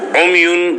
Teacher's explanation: عمیون پہ غنہ کریں گے کیونکہ نون تنوین ہے